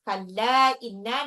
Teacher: lamnya itu dibaca panjang ya, karena dia mad jaiz munafasil. Mad tabi'i bertemu dengan alif, tidak dalam satu kata.